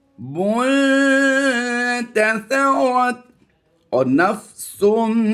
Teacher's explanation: इसमें आवाज़ नाक से लौटती हुई महसूस होती है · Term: गुन्ना